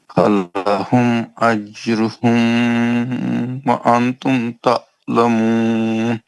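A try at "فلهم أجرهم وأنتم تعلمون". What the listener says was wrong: اجروہم کے میم کو کیوں کھینچا آپ نے؟ کیوں بولنا کیا اجروہم کے میم کو؟ اجروہم کے میم پہ غنہ کیوں کیا آپ نے؟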